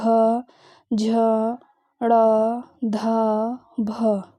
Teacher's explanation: प्राण वायु ज्यादा निकलेगी और साथ ही साथ घर्षण भी ज्यादा होगा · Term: महाप्राण